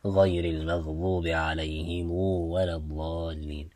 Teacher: recite with a dhamma on the meme and then elongate that dhamma to bring out a waw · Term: sila